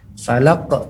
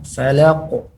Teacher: huruf qaf keluarnya daripada lidah paling belakang, dan lebih tepatnya adalah dengan cara menebalkannya. Falaq, jangan falaq.